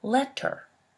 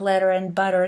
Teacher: It's not exactly a plosive, is it? Your tongue doesn't so much block the airflow as gently and very quickly taps the alveolar ridge. It is definitely not the same sound as you would have produced if you articulated the word very slowly, letter. · the one we produce in the middle of the words like letter and butter normally, is called a flap or a tap. But the tongue does not have to come into complete contact with any passive articulators at all in your mouth.